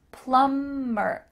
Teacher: Make sure that the B is silent.